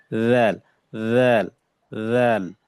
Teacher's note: জিহ্বার আগাটা উপরে যে দুই দাঁত আছে এই দুই দাঁতের সাথে লাগবে।